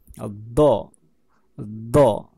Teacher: do itu ciri-cirinya yang paling lumrah atau biasanya itu lidah dipantulkan ke salah satu rahang gigi atau gusi ya, atau ke pipi ya.